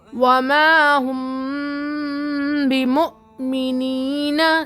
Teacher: مو جھٹکا دینا ہے. کیوں؟ کیونکہ یہاں حمزہ ساکنہ ہے. تختی نمبر 12 میں ہم جزم کے قاعدے میں پڑھے تھے نا کہ حمزہ ساکنہ کے پڑھنے میں جھٹکا ہوگا.